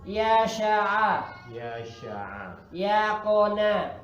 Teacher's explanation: Jadi tengah lidahnya diangkat, bukan di pucuk. Ya, bukan, tapi di tengah lidah.